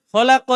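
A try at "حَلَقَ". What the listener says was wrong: Tidak ada titiknya. Halaqo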